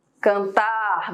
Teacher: Vejam que a sílaba tônica está lá no final